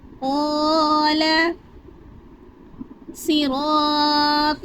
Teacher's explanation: قاف کو بھی پر پڑھیں گے، قاف حرف مستعلیہ میں سے ہے اور قا بھی حرف مستعلیہ میں سے ہے۔